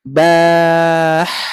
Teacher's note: Membaca huruf ba terus kita panjangkan kepada huruf ha sukun